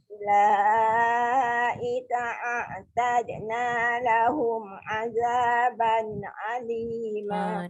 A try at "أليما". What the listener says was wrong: Dia bunyi macam alima tu macam ain. Azaban alima.